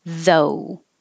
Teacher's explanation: the american o is two parts oh finishing with ooh · the th is voiced so you need vibration and the ough is just o though and the american o